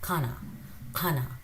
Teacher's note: It's somewhere between k and g, a mixed sound of k and g.